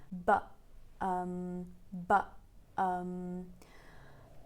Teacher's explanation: you use the vocal folds to stop the air like you have to finish very abruptly but but and then you pick up and you say um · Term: glottal stop